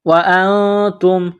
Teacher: نون ساکن کے بعد تا ہے، حروف اخفا ہے تو آواز ناک میں چھپائیں گے